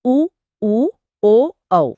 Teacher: वृत्तमुखी मतलब जिनके उच्चारण में होंठ गोल हो जाते हैं, वृत्त जैसे।